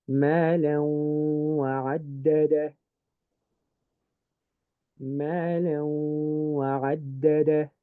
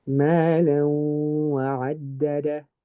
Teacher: I've done the ghunna, but my tongue has not touched my teeth.